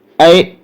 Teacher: अर्ध सम्रत स्वर के उच्चारण में मुख द्वार कम सकरा होता है।